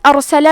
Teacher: کلمت ارسلہ میں حرف را پہ جزم ہے تو ہمیں حرف را کو موٹی آواز میں پڑھنا ہے